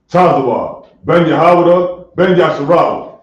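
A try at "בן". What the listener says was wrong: It's like you're gonna say bun, not Ben. Bun.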